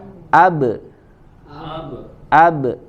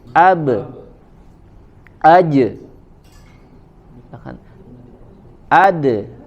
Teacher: dia tidak sempurna fathah, ya lebih ke condong ke huruf yang lain, ya seperti imalah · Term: qalqalah